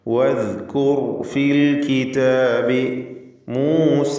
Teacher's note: റായിന് തഫ്ഖീം കൊടുക്കണമെന്ന് പ്രത്യേകം ശ്രദ്ധിക്കുക. തടിപ്പിച്ച് റാ ഉച്ചരിക്കുക.